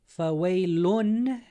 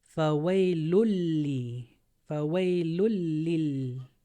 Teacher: instead of pronouncing that noon, we're going to go straight into the lam. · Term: Idhgham